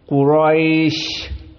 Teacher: Maka dua harokat Quroi seperti itu. Dan sya di saat disukunkan Quraisy, maka dia termasuk dari huruf al-hams, yang mana definisinya jaroyan an-nafs inda nutq